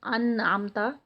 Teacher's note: تو اس میں پھر یہ ہوتا ہے کہ جیسے انعمتا، تو انعمتا میں جیسے یہاں پر یہ دیکھیں انعمتا کے یہاں پر نون آ گیا ہے، حمزہ کے بعد نون ہے، نون کے بعد جو حروف حلقی ہے عین ہے، تو اس میں ہم نون کو پروناؤنس کریں گے، یعنی ہم انعمتا اس کو پڑھیں گے، اس کا اظہار کریں گے۔